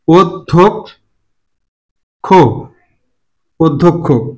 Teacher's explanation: এখানে ধটা হচ্ছে মহাপ্রাণ ধ্বনি, তার আগে কি আছে অল্প প্রাণ, দ, দ সহযোগে বসবে, ওদ। মহাপ্রাণের ক্ষেত্রে এই ঘটনাটা ঘটে থাকে অধিকাংশ ক্ষেত্রে, যেমন এখানে সভ্য বানানে ঘটছিল, ভটা হচ্ছে মহাপ্রাণ, অল্প প্রাণ হচ্ছে ব, অল্প প্রাণ প্লাস মহাপ্রাণ যোগে বসে, যেমন দুঃখ বানান।